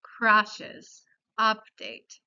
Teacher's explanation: La manera más popular de pronunciar el sonido U en los anglicismos es parecida a la vocal A en español.